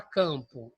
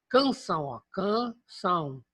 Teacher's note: o m não representa na verdade uma letra mais uma nasalização do ar